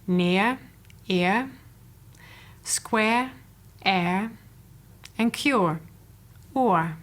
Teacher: The remaining 3 diphthongs are centering diphthongs. The second vowel is the central vowel schwa. They are near, ear, square, air, and cure, oor.